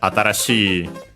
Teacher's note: It's accented, so yeah, atarashi, high up to the shi included, and then the i is low.